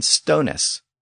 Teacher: it was still e s that old English Remnant so it was a distinct syllable on the end of the word